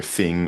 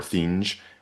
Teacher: the palatalization of the ng sound at the end of words